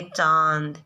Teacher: हम चांद का उच्चारण करेंगे चांद, तो श्वास वायु जो है वो मुख और नाक दोनों से निकलती है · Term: अनुनासिक स्वर